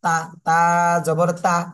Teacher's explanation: তা জবর তা, এটার উচ্চারণ কিন্তু তা, পাতলা করে উচ্চারণ হচ্ছে, পাতলা তা।